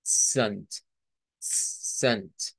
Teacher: Debemos de hacer primero la T y luego la S.